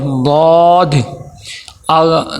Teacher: زبان کی کروٹ اوپر والے دھاڑوں کے ساتھ اگر لگے گا تو یہ ضاد نکلے گا